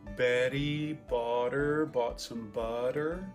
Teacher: Flap R. So this tapped R is the thing that Americans do a lot of times for a T or a D sound between vowels.